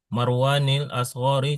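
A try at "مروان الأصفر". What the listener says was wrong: Alasfar bukan alasgar itu harusnya al-asfar.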